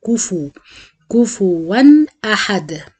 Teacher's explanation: من الأخطاء الشائعة في سورة الإخلاص إن دايما الناس بتنطق الفاء ساكنة، كفوا معناها فاء ساكنة وهي عليها ضمة، فلازم أتم الضم وأضم الشفايف